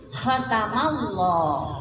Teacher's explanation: Nah, lo-nya di sini tafhim juga ya. Kalau lam di fathah itu tebal, tafhim ya